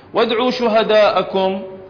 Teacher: الألف في شهداءكم مقدار مده 4 حركات